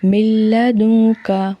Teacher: ہم نے جو ہے رکنا نہیں ہے اور نہ ہی ہم نے یہاں پہ غنہ کرنا ہے، ٹھیک ہے۔ جلدی سے پڑھنا ہے من لدنک، یہاں میم کی آواز لام میں ملائیں گے، ٹھیک ہے، لام میں مدغم ہو جائے گی۔